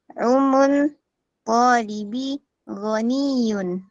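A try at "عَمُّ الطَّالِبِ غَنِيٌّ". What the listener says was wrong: Ada yang salah tuh. Bukan umun. Ammu. Ammut.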